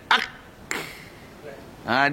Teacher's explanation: Dia akan keluar angin. Lepas dia, rilis dia adalah dengan angin. Hamas. Ak.